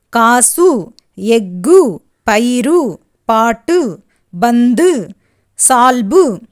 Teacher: கு, சு, டு, து, பு, ரு ஆகிய 6 வல்லின உகரங்களும் சொல்லின் இறுதியில் வரும்போது ஒரு மாத்திரைக்கு பதிலாக அரை மாத்திரை அளவே ஒலிக்கும் · தனக்குரிய ஓசையில் குறைந்து ஒலிக்கும் உகரம் குற்றியலுகரம்